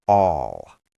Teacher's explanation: the L sound in all is often a dark L where your tongue is lower in your mouth.